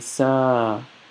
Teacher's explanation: Now when I say Sa, I'm not saying Sa quickly. You want to say, extend that a bit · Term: alif madda